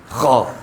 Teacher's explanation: ویسے حلق کے اوپر والے حصے سے آتا ہے خو اور یہ آتا ہے غین